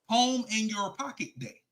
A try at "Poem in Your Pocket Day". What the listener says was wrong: Poem in your pocket. That you sound like you saying palm, like the palm of your hand in your pocket. A poem in your pocket.